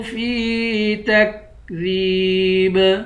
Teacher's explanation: فا کو یا کے ساتھ ملا کر یا کو ایک الف کی مقدار کھینچ کر پڑھیں گے